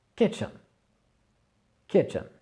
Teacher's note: accentuation sur la première syllabe, et le reste, on le prononce forcément, mais un petit peu sous silence